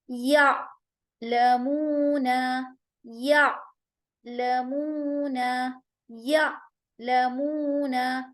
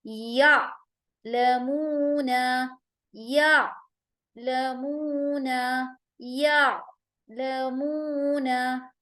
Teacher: ٹھیک ہے، تو حمزہ سکون کے ساتھ جب ہوگا تو ہم اسے جھٹکے اور سختی کے ساتھ ادا کریں گے، اور عین کا مخرج حلق کے بیچ والے حصے سے یعنی وسط الحلق سے نکالنا ہے، اور اس کو نکالتے ہوئے آواز میں نرمی ہوگی اور ہم اس کو جھٹکا نہیں دیں گے